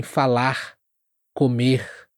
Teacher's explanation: Em regiões como Rio de Janeiro, o R, no final das palavras também vai ter esse som aspirado